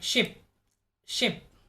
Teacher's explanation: the body of the tongue is raised high